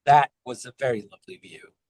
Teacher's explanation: So I don't even say the T. I just go straight to the W.